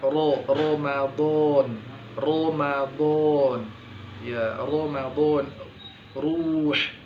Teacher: Kapan dia isti'la atau isti'ala atau irtifa' aqsal lisan, terangkatnya pangkal lidah, ketika huruf ro ini berharokat fathah dan dhamma.